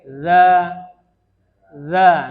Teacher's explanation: ujung lidah hanya sekedar nempel dikit saja ke gigi yang bagian atas